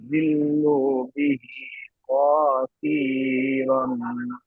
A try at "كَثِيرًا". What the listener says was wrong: কসির নেই, কাসির। তবে এখানে একটু আপনি এখানে দাঁড়াতে পারেন, এই যে লামটা দেওয়া আছে এখানে, এই যে তো আছে, আপনি এখানে দাঁড়াতে পারেন।